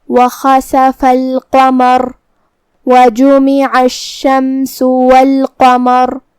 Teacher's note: کلمت القمر میں قاف کا دھیان رہے، ہمیں یہ حرف کو بھاری آواز میں پڑھنا ہے